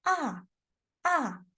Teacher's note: It's like falling down, falling down. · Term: last tone